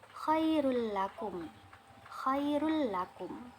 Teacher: Pembacaannya idgham yaitu memasukkan nun mati atau tanwin kepada huruf sesudahnya, namun pada idgham bila gunnah di sini tanpa mendengung. Bacaannya tanpa mendengung.